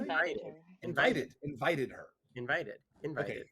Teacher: you did the stress on the first syllable of invited